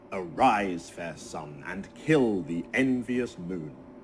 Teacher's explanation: each line of verse is made up of 5 2-syllable iambs for a total of 10 syllables. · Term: iambic pentameter